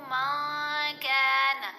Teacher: اس کو جب ہم احفا کریں گے تو اس کا کیا طریقہ ہے؟ نون کی آواز کو ناک میں چھپا کر پڑھتے ہیں اور ایک الف کی مقدار جتنا ٹھہر کر بھی پڑھتے ہیں